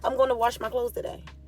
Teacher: They came to the conclusion that, for instance, the word wash. We say it like wash with an R in it.